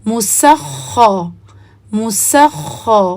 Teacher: اس کو خا کو سکون والے حصے کو بھی ہیوی کرنا ہے، مسخ مسخ۔ اسی طرح تت تو، یہ غلط ہے، تت تو تت تو آپ نے اس کو پڑھنا ہے تت تو۔